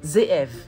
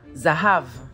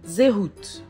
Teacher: Le Zayin est une consonne fricative alvéolaire sonore, c'est-à-dire qu'elle est prononcée avec la vibration des cordes vocales et en plaçant la langue sur l'alvéole de la mâchoire supérieure. Le son de cette lettre ressemble à celui de la lettre latine Z.